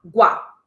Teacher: a tônica caiu na penúltima sílaba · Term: paroxítona